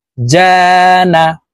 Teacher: জিম হরফকে জিহ্বার মধ্যখান থেকে উচ্চারণ করতে হবে, কারণ জিমের মাখরাজ জিহ্বার মধ্যখান থেকে হবে।